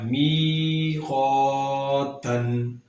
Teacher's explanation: جتنا می کو لمبا اتنا ہی قا کو لمبا کیا جائے گا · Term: الف مدہ